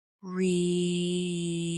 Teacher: When someone says, Really? with surprise, the tone goes up.